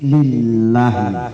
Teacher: Lafzul jalalah lillahi itu bacaan tipis karena didahului oleh baris di bawah li